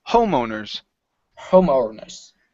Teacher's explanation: the stresses at the beginning instead of home owners